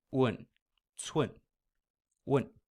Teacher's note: You're starting with that rounded U, oo, and blending it into kind of a nasal N sound.